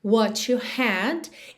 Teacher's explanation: Aqui a gente tem aquele som to, na ligação de what com you